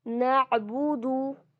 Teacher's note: बू और दू, ये दोनों ही जो है ये भी एक एक काउंट स्ट्रेच होंगे, सिर्फ एक ही काउंट, 2 काउंट्स नहीं करना है।